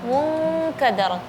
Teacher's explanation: Ketika nun sukun atau tanwin ketemu dengan kaf atau qaf. Jadi suara gunnahnya syadid, ya. Jadi suaranya seperti suara ing. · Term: ghunnatul ikhfa